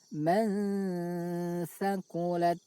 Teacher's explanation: bunyi nun sukun dibaca samar antara izhar dan idgham, lalu didengungkan. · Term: ikhfa